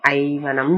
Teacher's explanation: அகரத்தின் பின் யகரமாகிய மெய்யெழுத்து வந்தும் ஐகாரம் என்னும் நெட்டெழுத்தை போன்ற ஒலி வடிவினை பெறும். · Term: ஐயாதல்